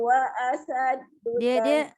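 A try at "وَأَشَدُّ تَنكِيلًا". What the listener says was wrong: Dia tertukar huruf tu. Asyad tu shina baksau jangan baksau. Asyaddu baksau wa asyaddu tankila. Ya, shin dengan sin tu tertukar.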